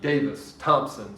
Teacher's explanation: is like my name my name is a trochee davis thompson stressed on the first syllable dropped on the second syllable